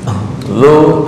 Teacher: lidah dicepit ujung lidah dengan gigi atas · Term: zal